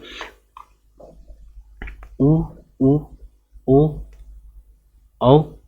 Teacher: वृत्ताकार स्वर अर्थात हम कह सकते हैं कि जिन स्वरों के उच्चारण में ओठ कैसा होना चाहिए, वृत्ताकार, अर्थात उसकी जो आकृति कैसे होनी चाहिए, वृत्त अर्थात गोल होना चाहिए